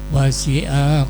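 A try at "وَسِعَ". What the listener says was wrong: A-nya pendek.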